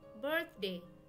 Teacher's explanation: Here the TH is voiceless as it comes before a consonant D.